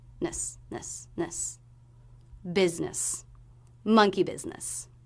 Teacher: And the first S here represents the Z sound, biz, business. The second syllable, since it's unstressed, should be very quick.